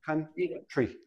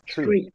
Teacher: When we have TR, TR together usually sounds like CHR. But we don't say country.